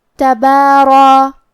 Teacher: با کو اور مد الف کو ہلکی آواز میں پڑھیں گے، لیکن را کو اور مد الف کو تفخیم سے مطلب بھاری آواز میں ادا کریں گے